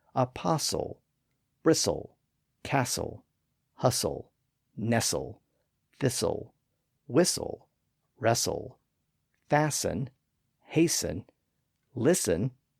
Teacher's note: all of those words are still spelled with a t but it's almost always silent in standard English now · That T sound was often lost in the transition from the first syllable to the second syllable.